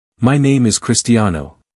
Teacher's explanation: You'll notice that my voice remains rather flat as I say it. · There's no rise, no sharp dip, just a steady, level tone.